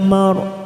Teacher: Ikatu ya mar, ya fathah berdiri 2 harokat. Ya mar, ra sukun yang didahului fathah kita baca tafkim